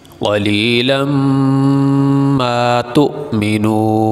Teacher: بھی کر سکتے ہیں اور ملا کے بھی پڑھ سکتے ہیں، ملا کے پڑھنے کی صورت میں یہ تنوین پہ غنہ ہوگا ، اس لیے کہ تنوین کے بعد حروف حلقی میں سے